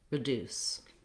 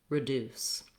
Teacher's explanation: I can just add my r, my brief, unstressed first syllable to the deuce